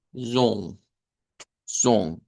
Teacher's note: Porque solo es una O nasalizada